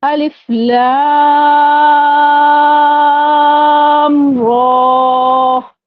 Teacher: ہم نے را کو زیادہ نہیں کھینچا. جیسے ہی ہم نے الف پڑھ کے لام کو کھینچا ہے 5 الف کی مقدار، اس کے فوراً بعد ہی ہم نے را کو پڑھا · جیسے ہی ہم نے الف پڑھ کے لام کو کھینچا ہے 5 الف کی مقدار، اس کے فوراً بعد ہی ہم نے را کو پڑھا، اور ہم نے کیا کیا، لام کی میم پر ہم نے غنہ نہیں کیا